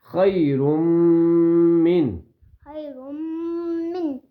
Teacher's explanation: نون کی آواز کو یا میم کی آواز کو مکمل ناک میں چھپانا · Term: غنہ